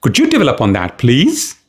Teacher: I raised the pitch on please.